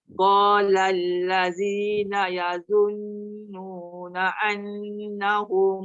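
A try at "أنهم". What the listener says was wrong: Na'an tu kan dia tekan. Hamzah tu dekat bawah tu dia tak tekan. Dia macam cuba sebut tu terus pergi dekat nun. An. Itu saja, jangan tekan kuat.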